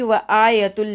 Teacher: हमज़ा के ऊपर खड़ा ज़बर है, इसको हमने 2 सेकंड तक पुल करना है